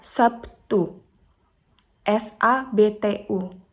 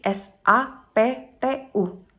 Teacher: atau sabtu dengan bertemunya kedua bibir atas dan bawah dimana terlihat fonem konsonan B berubah menjadi konsonan P sebagai akibat pengaruh dari bunyi t jadi bunyi b adalah bunyi hambatan yang bersuara sedangkan bunyi t